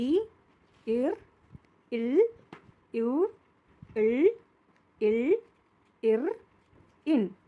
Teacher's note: இந்த ல் சொல்லும்போது நாக்கு வந்து பல்லுக்கும் கொஞ்சம் உள்ள தள்ளி தொடணும் மிடில்ல தொடும் நடு அன்னத்துல தொடும்